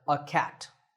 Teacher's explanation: in natural speech we don't say a we say uh